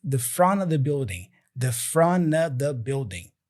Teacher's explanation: he's reducing the preposition of to a schwa sound, So he says in front.